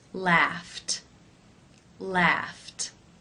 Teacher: The final sound in the infinitive is F, the unvoiced F sound.